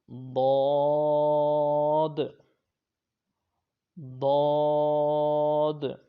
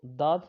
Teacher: یہ ضاد حرف حافیہ یعنی زبان کی کروٹ اور اوپر کے داڑوں کی جڑ سے ادا ہوتا ہے۔ اگر اس کو داد پڑھ دیا جائے یا دوات پڑھ دیا جائے، یعنی کہ زبان کی نوک اور اوپر کے دانتوں کی جڑ سے عموماً یہ لوگ اس کو پڑھتے ہیں، تو یہ غلط ہے۔